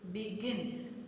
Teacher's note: Stress falls on the last syllable गिन. बिगिन तो गिन पे हम थोड़ा ज़्यादा स्ट्रेस कर रहे हैं.